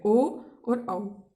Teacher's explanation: कंठोष्ठ है कंठ प्लस ओष्ठ, कंठ और ओष्ठ से मिलकर जो बने हैं वो स्वर होते हैं कंठोष्ठ है